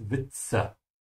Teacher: Remember to pronounce the W like a V, yeah. And the Z is a TS sound like cats, Witze. Yeah, even though there's a T, there would be a T sound regardless because of the Z, Witze.